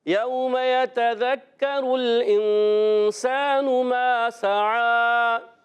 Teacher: اگر حروف الکی میں سے ہوتا حمزہ ہا عین ہا غین خا تو وہاں ہم غنہ نہیں کرتے، مگر یہاں حروف اخفا میں سے اس لیے غنہ کریں گے. سین کو سیٹی کے ساتھ باریک پڑھنا ہے اور ایک الف کھینچنا بھی ہے. سین الف زبر سا، ان پر پیش ہے، حرکت ہے.